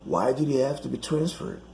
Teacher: so he just cuts the h sounds